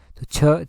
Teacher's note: ही जो है वो तालू से जो है वो होता है छ का उच्चारण जो है वो तालू से होता है